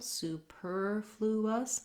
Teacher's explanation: we still use that ooh vowel in the first syllable